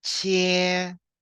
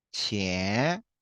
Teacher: so 千 is first tone, 千. But if you pronounce the second tone, 钱